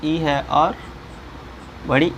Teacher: तालव्य से बोले जाने वाले स्वर कौन से हैं, ई है और बड़ी ई है।